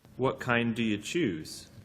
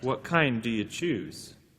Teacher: we can then emphasize the word kind